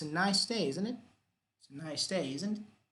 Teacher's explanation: What about falling intonation? Well, it's not a real question.